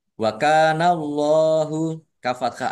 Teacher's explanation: lamnya Allahnya dibaca tebal karena harakat di depannya fathah